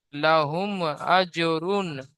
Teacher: মিম সাকিনের পরে বা মিম ছাড়া অন্য অক্ষর হামজা এসেছে, তাই মিম সাকিনকে বিনা গুণায় জাহির করে তাড়াতাড়ি পড়তে হবে